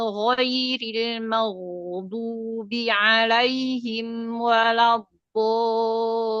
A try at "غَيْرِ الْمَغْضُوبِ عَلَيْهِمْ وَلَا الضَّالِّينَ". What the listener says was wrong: Jadi huruf sodnya ketika kasroh, itbaknya lebih dilihatkan. Sli. Jadi jangan shui. Jangan mengumpulkan di tengah ya. Tapi turunin angkat pangkalnya, turunin di bagian itbaknya, angkat pangkalnya tapi turunin di kasrohnya. Sli gitu ya. Latihan di huruf itu. Tinggal sli gitu aja ya. Jangan shui, jangan pakai. Nanti dia hurufnya ketukar antara shin sama sli.